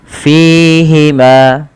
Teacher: Ketika melafalkannya Harus mengalirkan nafasnya dan teman-teman tidak boleh menggunakan huruf P ya Jangan dibaca dengan Fima artinya bibir kita merapat tidak tapi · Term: hams